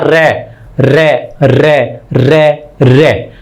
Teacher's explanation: रै के उच्चारण में जीभ लुढ़कती सी नजर आती है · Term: प्रकंपित व्यंजन